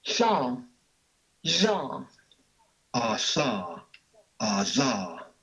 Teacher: And then there are also the lateral fricatives at the alveolar place of articulation.